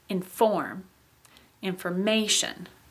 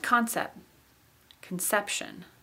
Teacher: the main stress got shifted off into those added syllables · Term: stress change